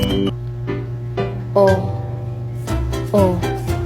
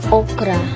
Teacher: Ang lrang O naman ay bahagyang nakataas ang dila at nasa likurang bahagi ng bibig. Medyo bilog ang hugis sa labi nito.